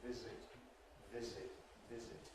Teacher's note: Visit, again, has got a Z in the middle. In a word such as visit, there should be voicing right through. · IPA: [ˈvɪzɪt]